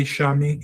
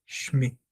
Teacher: It doesn't say shemi, it doesn't say shami, it says shmi. I suppress the open vowel and I shorten it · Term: shewa